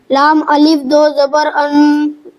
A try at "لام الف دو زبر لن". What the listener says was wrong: ان نہیں لن، ٹھیک ہے، لام الف دو زبر لن،